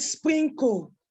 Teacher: the word sprinkle has three consonant sounds three consonants at the beginning of that word